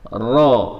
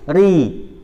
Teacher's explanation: Ini kan beda. Ro tebal atau tafkhim, atau kalau ri ini adalah tarqiq atau tipis.